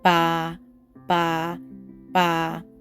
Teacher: so that's a low consistent tone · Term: yi mu